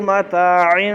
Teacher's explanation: کو زیادہ لمحہ نہ کر، متاعن اتنا ہوگا، متاعن نہیں ہے، تا کو ایک الف کے برابر مد اصلی ایک الف ہوتی ہے، زیادہ لمحہ نہیں کریں